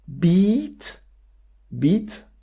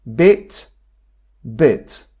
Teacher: a pattern they change gradually so beat beat bit bit so there is a clear scale here from the most tense to the most relaxed one